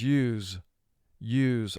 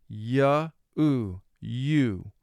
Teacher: it's composed of two individual sounds the ya sound and the oo sound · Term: long u sound